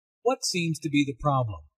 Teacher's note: notice that the intonation falls at the end of the question the doctor wants information not a yes/no answer